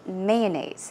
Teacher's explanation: i say mayonnaise so i put stress on the first syllable